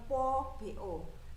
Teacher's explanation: B itu dibacanya P tanpa hembusan. Di situ artinya tanpa hembusan itu tidak ada angin yang keluar dari mulut.